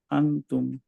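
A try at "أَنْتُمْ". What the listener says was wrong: টাংটা আরেকটু সামনে আসবে এই আফতা সামনের যে টিকটা ওইটার কাছাকাছি থাকবে ভাইয়া টাংটা টাংের টিপটা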